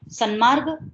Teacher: ત નકારમાં પરિવર્તન પામે છે અને માટે ત્યાં આગળ સન્માર્ગ એવો શબ્દ બને છે